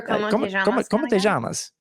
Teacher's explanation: I say my Y or double L sounds as je, which is an Argentine accent